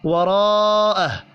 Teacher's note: الف کے اوپر بڑی مد ہے، 5 الف کے برابر کھینچ کر پڑھنا ہے · را کے اوپر زبر ہے، را کو پر پڑھیں گے۔